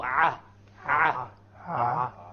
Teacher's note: Slightly above the throat, the lowest part, which is the middle area, we have 2 letters, ayn and ha.